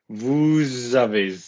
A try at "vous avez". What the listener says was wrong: Don't be fucking reading. Nobody said vez.